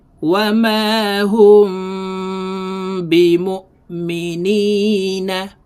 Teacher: এই মিম সাকিন কে দুই ঠোঁটের মাঝে ফাঁকা রেখে সুতা পরিমাণ ফাঁকা রেখে উচ্চারণ করতে হবে